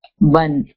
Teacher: The tanween sound ends in the noon sound.